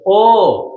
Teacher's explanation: অ যখন ও এর মতো উচ্চারণ হয় তখন দেখবা তোমার মুখ গোল হয়ে যাচ্ছে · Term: সংবৃত উচ্চারণ